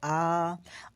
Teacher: आपका जो ओठ है वह पूरी तरह से गोला आकार में हो रहा है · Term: विवृत